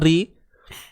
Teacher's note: Huruf ra baris bawah nipiskan dia.